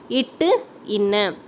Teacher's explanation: நாவின் நுனி மற்றும் அன்னத்தின் நுனி வருவது